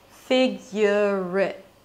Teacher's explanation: the word it reduces to a schwa and a T, since it's a function word. And function words are usually reduced when they're not stressed to a schwa.